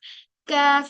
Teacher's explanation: कैफ ये बिल्कुल बारीक लेटर है और ये हार्ड पैेट जो है हमारा वहां पर टच होकर ये अदा होता है